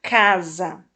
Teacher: notamos que a sílaba cá foi pronunciada mais fortemente que a sílaba za por isso dizemos que é a sílaba tônica da palavra então